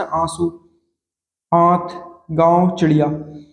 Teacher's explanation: इसके बाद अगला जो देखेंगे लाइन हम, अनुस्वार और अनुनासिक में अंतर। अनुनासिक का उच्चारण नाक के बहुत कम सांस निकलती है और मुंह से अधिक निकलता है